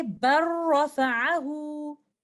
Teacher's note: We will do idgham kamil here. The letter lam is completely merged into letter ra. That's why you will find letter ra with the shadda, indicating idgham kamil happening here.